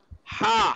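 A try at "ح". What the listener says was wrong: Middle throat. Yeah, it should be sharper.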